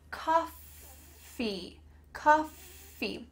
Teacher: Coffee, coffee, make sure that F, here, is clear. Your teeth are on your bottom lip and there's some air passing through, coffee, coffee.